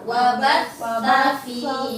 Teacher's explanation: Wabat pakai ta, ujung lidah keluar